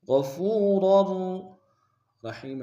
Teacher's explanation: یجد اللہ غفورا رحیما، غین کو موٹا ادا کریں گے، فا کو واو کے سامنے لائیں گے، وہ مدہ ایک مقدار میں کھینچیں گے، را کے تنوین کو اگلے را کے سامنے لائیں گے، شدہ زور دیں گے